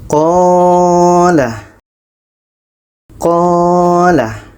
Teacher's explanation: Qa ini dibaca panjang sebab ada alif sebelumnya baris atas · Karena ada alif sebelumnya baris atas dan dibaca 2 harakat.